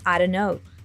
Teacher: We've got here a drop of the T sound in the anti-letters combination.